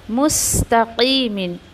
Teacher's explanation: मुस्तक़ीमिन, सीन पे अच्छे से आपको सीन को वाज़ी करके पढ़ना है और क़ाफ़ को हैवी करते हुए